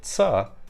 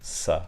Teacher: In Portuguese they simplify those sounds by getting rid of the affricate sounds and making them into fricative sounds.